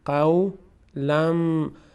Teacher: بعد از تنوین میم آمده، حروف یرملون، تنوین تبدیل میشه به میم. قولم، لم نمیگیم لن، قولم معروفه، معروفه.